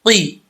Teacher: قاف دو نقطوں والا ہے، یہ حروف مستعلیہ میں سے ہے تو اس کو پر پڑھا جائے گا، قاف زیر قی۔